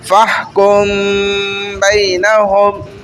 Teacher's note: ہلکا سا غنہ بھی ہو رہا ہے اور میم چھپ بھی رہا ہے ہونٹ دبنے سے